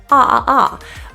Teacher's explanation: This is an ah vowel. It's an open lip position, open jaw vowel. The tongue is really low in the mouth. Ah. But the main issue is that our lips are really kind of open.